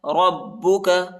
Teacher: را کو با کے ساتھ ملائیں گے اور با کو شدت کے ساتھ پڑھنا ہے، سختی کے ساتھ